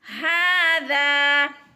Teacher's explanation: ہا کو بھی کھینچ کر پڑھنا ہے، ایک الف کے برابر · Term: کھڑی زبر